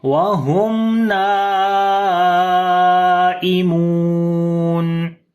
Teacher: After the mim sakin, the next is noon. We make the clear sound of mim